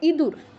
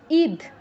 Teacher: আমরা কিন্তু এই ঈদের ই আর ইঁদুরের ই দুটো উচ্চারণের সময় কোন পার্থক্য রাখি না দুটোই একভাবে উচ্চারণ করি